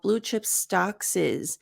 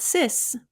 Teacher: is is the pronunciation of the S is a z so stocks ends in an s and is ends in a z sound so then we link it stock s SZ not sis but SZ like Sizzle stocks is